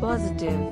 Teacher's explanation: three syllables and the emphasis on first syllable